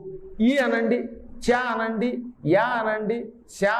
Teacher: ఇ అనగానే చ అనగానే శ అనగానే టక్కనవి మనకి తాళవ్యములుగా ధ్వనిస్తాయి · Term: తాలవ్యాలు